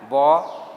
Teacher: ब बोलने में ओठ सटता है ब, जबकि व बोलने में ओठ खुलता है, ओठ सटता नहीं है।